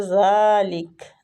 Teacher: زال کو کھینچیں گے الف کھڑی زبر کی وجہ سے، ٹھیک ہے، کھڑی زبر ہے نا زال کے اوپر۔